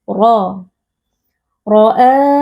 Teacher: atau tebal karena di sini huruf ro posisinya berharakat fathah jadi kita mengangkat pangkal lidah supaya huruf ro ini menjadi tebal ro roa mad badal karena ada Hamzah yang bertemu dengan alif